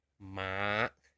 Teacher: In Thai, ma, it needs to drop off at the end. Naturally, you don't want to force it down, because it sounds like a low tone.